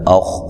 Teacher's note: خا کو موٹا ادا کریں گے لیکن ہلانا نہیں ہے